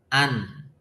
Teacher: Nun itu makhrajnya adalah lisan, ya. Ujung lisan. Lisan yang depan ini. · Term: nun sukun